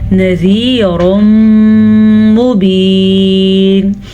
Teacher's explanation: नज़ीरुम मुबीन, तनवीन के बाद मीम आ गया है तो यहाँ पे इदगाम बिल गुन्ना का कायदा होगा।